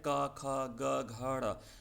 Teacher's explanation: कंठ्य ध्वनि यानी गले से निकलने वाली